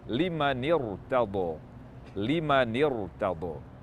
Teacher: Liman irtada, huruf ra bersukun terletak di setelah huruf hamzah wasal, maka dibaca tafkhim.